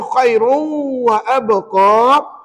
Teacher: Tanwin tak payah baca. Yang kita baca apa? Huruf waw lah selepas tanwin tu. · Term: bunyi sengau